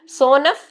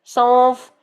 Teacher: यहाँ पे नून अदा तो नहीं कर रहे, हम क्या कह रहे हैं, सौंफ, नून छुपा छुपा अदा हो रहा है ना, सोनफ नहीं कर रहे, सौंफ नहीं कर रहे, क्या कर रहे हैं, सौंफ। तो सौंफ में नून छुपा छुपा अदा हो रहा है